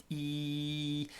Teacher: the sound is being produced just in this front top corner of the mouth